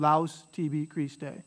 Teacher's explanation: here's your au diphthong so it's just one sound